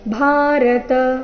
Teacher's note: ಭಾರತ ಭಾ ಮಹಾಪ್ರಾಣ ದೀರ್ಘ ಬರಬೇಕು